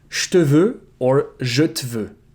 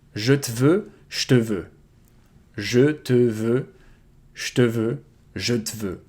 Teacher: You can devocalize the E, but you have to choose which one to devocalize. And both actually work.